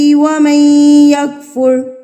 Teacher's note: ومن، یہاں پر ادغام ہو رہا ہے، ادغام کہتے ہیں ملانے کو، مدغم کرنے کو. تو نون ساکن کی آواز کو ہم نے یہاں پہ مدغم کر دیا ہے. نون ساکن کے بعد اگر حروف یرملون میں سے کوئی حرف آ جاتا ہے تو نون ساکن کو مدغم کر دیا جاتا ہے یعنی کہ ملا دیا جاتا ہے.